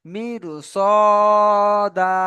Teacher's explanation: এই সদকে এই র সাকিনের পরে আসার কারণে এই রটি জের থাকার সত্ত্বেও আমরা পুর পড়ব